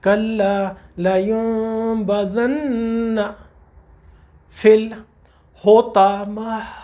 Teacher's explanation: تا آیا ہے قرآن کا جو بہت بھاری حرف ہے، بولڈ حرف ہے. یہ اس کی جگہ جن بھائیوں کو نہیں پتہ ہوتا وہ 2 نقطوں والا تا پڑھ دیتے ہیں، معنی بدل جاتا ہے، لفظ بدل جاتا ہے، اور یہ ہماری غلطی ہے.